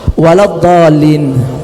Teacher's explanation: Kemudian pada lafaz dallin itu ada mad lazim musaqqal kalimi, dipanjangkan 6, wajib 6. Musaqqal itu diberatkan karena ada tasydid.